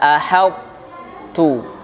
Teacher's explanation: Sifat to yang tertutup, yang tebal-tebal itu, yang isti'la masih ada. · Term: idgham naqis